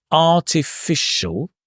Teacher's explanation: Although it looks like a s, you can see here it's a sh sound.